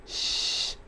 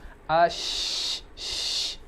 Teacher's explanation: suara atau menyebarnya nafas yang hanya dimiliki oleh huruf shin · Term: tafashi